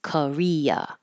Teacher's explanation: the American pronunciation changes the O and the a to uh because they're not stressed